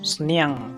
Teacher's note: there's a nasal sound, the sound comes from the nose.